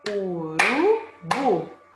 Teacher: A sílaba tônica é bu, a sílaba mais forte. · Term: oxítona